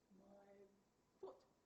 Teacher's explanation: No, when I'm saying my foot, I'm saying and my teeth are descending towards the lips